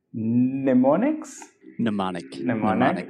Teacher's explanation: you can kind of forget that first M in the word mnemonic